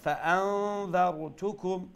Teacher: নুন সাকিনের পরে অক্ষর কোনটা আইছে জাল আর জাল হইল কি ইখফা লেটার বিদায় আমরা এখানে নুন সাকিন দিয়ে ইখফা করি